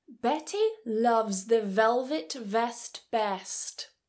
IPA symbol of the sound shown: v